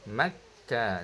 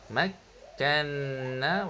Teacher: kaf bersifat asyidahlah dia putus